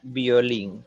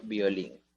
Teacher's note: la palabra violín justamente tiene un diptongo creciente porque primero está la vocal cerrada, la I, y luego la vocal abierta, la O.